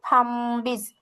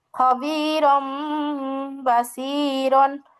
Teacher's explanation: বা আসলে নুন সাকিন ও তানবিনকে মিম দ্বারা পরিবর্তন করে পড়তে হয়। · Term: ইকলাবের